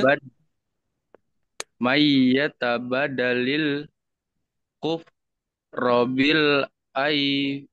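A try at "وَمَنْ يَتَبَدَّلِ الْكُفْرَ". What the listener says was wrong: Ini ada tasjid ya. Dan ternyata di tasjidnya kurang ya. Namanya tasjid itu ini nih ya. Ini tandanya kalau menemukan tanda seperti ini di ini nih ya. Ini dibacanya double. Tuh, dan nyamber. Mai. Mayyatabad.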